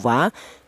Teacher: huruf wau ini itu dihasilkan dari kedua bibir yang renggang. Kita bilang wa itu kedua bibir, baik bibir atas atau bibir bawah berperang, akan tetapi tidak rapat ya, renggang. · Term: huruf wawu